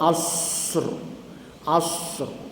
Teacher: kita masukkan takrir getaran ra pada safir sad